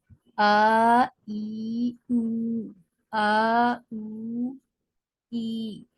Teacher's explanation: یہ منہ کے خالی حصے سے ادا ہو رہے ہیں اور کہیں بھی زبان نہیں ٹکرا رہی ہے، لیکن تھوڑا سا بس فرق یہ ہے کہ جب آپ حروف مدہ الف کو پڑھتی ہیں تو با تھوڑا لاؤڈ اوپن ہوتا ہے، تھوڑا زیادہ منہ کھل جاتا ہے، بو میں منہ کھلنے کی کیفیت بدلتی ہے، اور بی میں بھی الگ طرح کی کیفیت ہوتی ہے۔